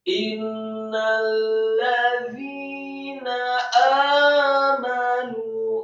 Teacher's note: Kata innalladzina amanu yang pertama inna, setelah alif yang kasrah satu harokat, kemudian nunnya tasydid dengan gunnah dan yang gunnahnya panjang atau matnya seperti dua harokat. Setelah ditasydidkan, nunnya harokatnya fathah satu harokat.